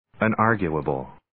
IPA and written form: ən'ɑːrgjʊəbəl (Unarguable)